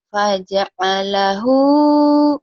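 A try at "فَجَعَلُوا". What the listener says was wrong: Faja'alu. Faja'alu. Kemudian di lain ayat ada faja'alahu. Di sini faja'alu.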